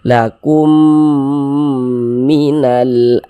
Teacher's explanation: ke huruf mim yang ini melebur dia ke huruf mim begitu Jadi walaupun hurufnya ada dua ya kita baca satu begitu kan dia melebur kemudian kita dengungkan kita dengungkan itu kita tahan kita panjangkan sejenak